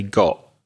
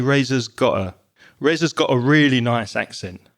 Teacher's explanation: Although when I speak, I would probably make the got, the t on got, very weak and very soft and say got.